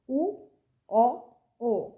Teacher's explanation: ঠোঁটটা বর্তুল বা গোলাকার বা কুঞ্চিত হয়ে যাচ্ছে গিয়ে, গোলাকার হয়ে যাচ্ছে গিয়ে, বর্তুল আকার হয়, বর্তুল বা গোলাকার হয়ে যায় গিয়ে। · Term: কুঞ্চিত স্বরধ্বনি